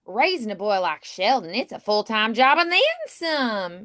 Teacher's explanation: you can go up at the end · she could, with the Texas accent, say a statement, but kind of lift at the end.